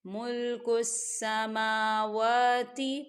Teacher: سما میم پہ کھڑی حرکات ہے اور واو کے پر بھی کھڑی حرکات ہے، تو یہاں دو حرکت کے برابر کھینچ کے پڑھیں گے